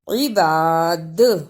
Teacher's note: رکنے کی صورت میں دال پر بھی قلقلہ کرنا ہے